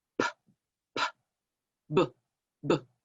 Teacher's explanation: the unvoiced stop sound with our lips is p, p, p. And if you put your hand in front of your face, you can feel that p, puff of air. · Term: lip stop sounds